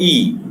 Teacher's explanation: E is a front close vowel, long E.